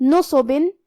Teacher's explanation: یہاں نون پہ اور صاد پہ دونوں پہ پیش ہے تو ہم یہ دونوں پیش کو برابر سے ادا کریں گے اور اسے ظاہر کریں گے. حرف الصاد حروف تفخیم میں سے ہے تو ہم یہ حرف کو بھاری آواز میں اور منہ پھولا کے پڑھیں گے. آخر میں با کے نیچے تنوین زیر ہے.